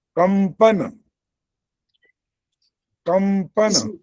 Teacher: जो वर्ग का अंतिम आ रहा है इसीलिए कंपन म सुनाई दे रहा है